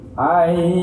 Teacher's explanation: Masuk dengan dengung, ditekan dan ditahan 2 harokat, yaitu nun mati tanwin fathah kasrah dhamma ketemu dengan ya. · Jadi ai-nya panjang. Ayyusol, tidak sekedar ayyusol, kurang. Jadi dua ketukan. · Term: idgham bi gunnah